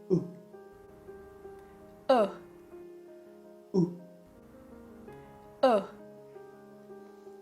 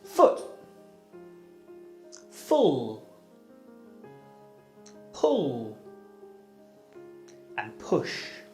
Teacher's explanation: To produce the sound, put your tongue close to the top and near the back of your mouth. Then make a short voiced sound with your mouth closed